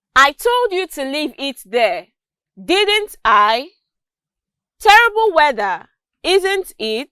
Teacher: you'd notice that i used a falling tone at the end of each of these questions